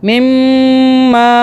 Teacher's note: یہاں پہ ہولڈ کیا تھوڑی دیر کے لیے، منہ میں میم کو رکھا، مما، گنہ ہوا میم پہ 2 سیکنڈ کا